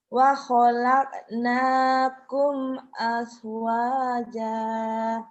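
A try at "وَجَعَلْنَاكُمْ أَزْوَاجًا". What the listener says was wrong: Mirip yang Bu Tiwi, zainya az. Bukan as, az. Zaitun, az. Az. Az.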